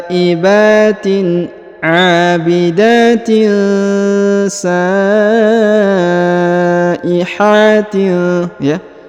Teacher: huruf sa-nya dipanjangkan 5 harokat karena terdapat tanda panjang 5 harokat